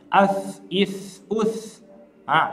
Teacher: Ini huruf sebelum huruf sa sukun ada huruf hamzah yang berharokat dhammah, maka otomatis hamzahnya pasti monyong karena dia berharokat dhammah, tetapi huruf sa kembali ke rahang tipis, tidak boleh ikut monyong.